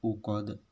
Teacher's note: huruf dal kasroh yang diwaqafkan menjadi dal mati akhirnya qalqalah kubro